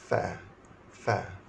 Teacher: Gigi atas bersentuhan dengan bibir bawah. Fa. Gigi atas sentuh bibir bawah, iaitu huruf fa.